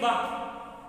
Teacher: बा पे दोनों ओठ चिपक रहे हैं, इसलिए ओष्ठ